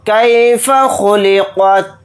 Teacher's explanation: خا کو موٹا پڑھیں گے یعنی پر، قاف کو بھی یہاں پر موٹا یعنی پر پڑھیں گے، تا کو ساکن بنا کر پڑھیں گے حالت وقف میں۔